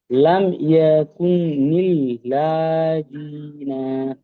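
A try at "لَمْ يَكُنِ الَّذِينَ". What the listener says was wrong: লাটা টান নেই, লাম ইয়াকুনিল্লাযীনা। নাটাও টান নেই শেষে, ঠিক আছে, মিউট করে নেন। ইয়াকুনিল্লাযীনা সির্ফ এই জালটা টান আছে, ঠিক আছে, প্র্যাকটিস করেন। লাম ইয়াকুনিল্লাযীনা। আবার বলি, লাম ইয়াকুনিল্লাযীনা।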